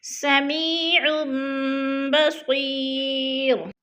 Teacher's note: عین کو اوپر چھوٹا سا میم لکھا ہوا ہے، میم کو پڑھنا ہے یعنی اقلاب کرنا ہے